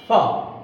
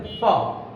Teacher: উচ্চারণটা হবে উপরের দাঁত নিচের ঠোঁটের সাথে লাগবে, উপরের দাঁত নিচের ঠোঁটের সাথে স্পর্শ করবে